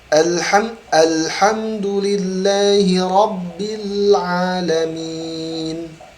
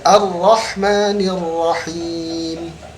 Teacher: Yaitu antara terbukanya bibir dengan tertutupnya bibir. Jadi ketika mengucapkan huruf nun, alhamdulillahi rabbil alamin, bibir kita terbuka. Tapi ketika ar-rahmanir rahim, tertutup.